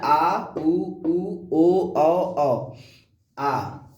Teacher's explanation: और पश्च स्वर ऐसे स्वर जिनके उच्चारण में जब हम बोलते हैं तो हमारी जीभ बिल्कुल पीछे जाके गले में बैठ जाती है, तो उसको हम कहते हैं पश्च स्वर।